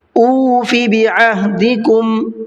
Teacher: اس کے اندر اکثر غلطی یہ کر دیتے ہیں لوگ کہ فا کو کھینچ کر کے پڑھتے ہیں، حالانکہ فا کے اندر حرکت کا قاعدہ ہے، اس کو کھینچ کر کے نہیں پڑھنا ہے، جلدی پڑھنا ہے